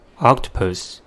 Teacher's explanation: the word has 3 syllables and the stress is at the first one. The first syllable is oc, ah, the first sound of A-O-U, k, the first sound of ks.